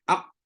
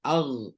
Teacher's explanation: Beza dia qaf sekat, aq. Rain tak sekat, ar.